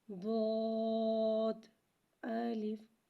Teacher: داد کو ایک الف یعنی 3 مقدار کھینچ کے پڑھیں گے۔ داد حرف مستعلیہ ہے لہذا سے موٹا پڑھیں گے۔